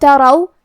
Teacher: یہاں حرف الراء پہ زبر ہے، تو ہمیں را کو موٹی آواز میں پڑھنا ہے